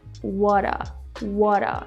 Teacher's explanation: we combine what and are what a what a almost sounds like water in English